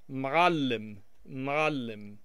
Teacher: There's a letter in the Arabic language called ayn or ayn, depending on which dialect of Arabic you're speaking, and it makes kind of like a choking sound.